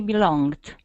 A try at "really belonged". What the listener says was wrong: Here, give me a good R. Really belonged.